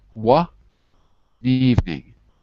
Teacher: we take the N and we move it to evening, so it becomes one evening. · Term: Link It Up